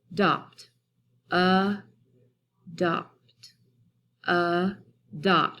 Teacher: when I sound it out and I look at those two syllables, I automatically hear that schwa sound at the very beginning. So the schwa sound would be right here.